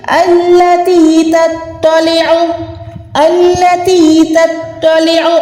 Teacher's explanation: تا کے ٹائم آپ نے جو ہے باریک ادا کرنا ہے اور تو پہ آپ نے موٹا ادا کرنا ہے